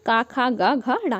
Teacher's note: ये 5 वर्ण जो है जिन्हें हम लोग कंठ की सहायता से बोलते हैं।